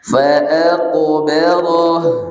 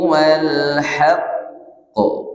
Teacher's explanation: kalau yang fa'aqbarah dia langsung sukun langsung mantul, tapi di kalimat wal haqqu tertahan dulu. Ada perbedaan qalqalah.